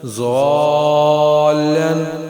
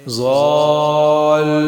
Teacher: اگر کلمے کے آخری حرف پر شد ہو تو وقف کی حالت میں تشدید باقی رکھیں گے لیکن حرکت کو ظاہر نہیں کریں گے۔ مثال کے طور پر ضاد الف مد زبر لام ضال، لام دو زبر لن، ضالن، وقف کی حالت میں ضال۔